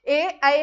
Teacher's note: कंठतालव्य वर्ण म्हणजेच काय कंठातून आवाज निघणारे